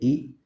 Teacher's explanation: जीवा को मुंह में जितना संभव हो सके उतना ऊंचा और तालू से समीप रखा जाता है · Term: संवृत स्वर